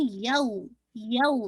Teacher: یو کی جو ایک کاؤنٹ ہے نہ 2 کاؤنٹ ہے نہ ہی 1 کاؤنٹ ہے، ان بٹوین ہے، تو ہم اندازے سے کہہ دیتے ہیں کہ 1.5 کاؤنٹ کر لیجیے.